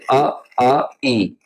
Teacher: निरनुनासिक जो स्वर होते हैं जिन स्वरों के उच्चारण में हवा केवल मुंह से निकलती है